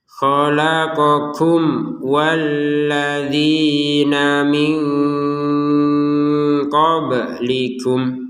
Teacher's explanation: Nun sukun bertemu qaf kita baca dengan samar